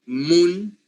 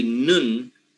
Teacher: So if I say, for example, moon with m bilabial, moon, but then I say nun with n, I am saying a totally different word because I changed one sound.